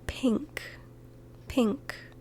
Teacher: you might think oh no that's just p i n okay there's no G sound in there no but there is an NG sound in there